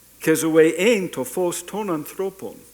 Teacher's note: The second zoe is you keep the low tone in there because it's now topicalization, it's not focus.